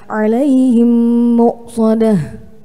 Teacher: Idgham mimi adalah apa ada mim sukun bertemu dengan mim yang berharokat sehingga ditekan dengan gunnah selama dua harokat